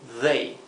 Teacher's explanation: They aquí lo he escrito con DH para imitar la TH inglesa, que sería they, parecido a una D pero vibrante